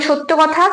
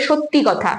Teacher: যখন সত্য বলছি তখন কিন্তু শেষে কোন স্বর ধ্বনির আগমন হয়নি যখন ধ্বনিটা পরিবর্তন হয়ে সত্যি হয়েছে তখন লাস্টে একটা ই স্বর ধ্বনি আসছে তাহলে এটাকে বলবো অন্ত সরাগম আশা করছি তোমরা ধ্বনির যে আগমনের